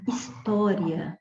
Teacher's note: Na palavra história, por exemplo, ó, separando as sílabas para ver que esse encontro ficou na mesma sílaba. Como o A é sempre vogal, eu pronunciei o som de I na mesma sílaba, então este som é de uma semivogal, então é do mais fraco para o mais forte. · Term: ditongo crescente